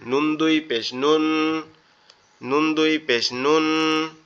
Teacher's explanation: জিহ্বার আগা উপরের তালুর সাথে লাগবে লেগে উচ্চারিত হবে